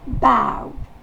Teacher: Le A va se prononcer E. Et la syllabe accentuée, c'est ow.